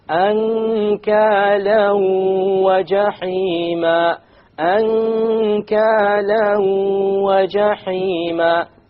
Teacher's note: You merge the tanween along with the waw and you move on. You don't pronounce the end sound and you have a ghunna.